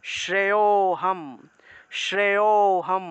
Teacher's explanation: শ্রেয় শ্রেয়তে গিয়ে ও তে গিয়ে আমি এখানে একটু টান দিয়েছি অর্থাৎ এই যে শ্রেয় এর সাথে সাথে একটা অ চলে আসলো